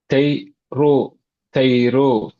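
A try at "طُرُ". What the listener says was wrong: இந்த ரூ என்று போறது குறையணும். ரூ தை ரூ.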